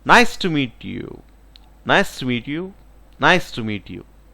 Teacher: I raise the tone the starting of the sentence, and I slowly reduced or lowered my voice when when comes to end. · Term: falling tone